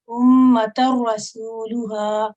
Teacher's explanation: را سے پہلے کیونکہ فتح کی تنوین ہے تو یہاں پر بھی موٹا ہی را پڑھا جائے گا